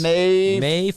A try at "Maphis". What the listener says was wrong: Not a T, not a T.